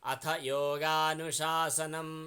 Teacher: यो गा दीर्घ छन्, नु ह्रस्व छ, सा दीर्घ छ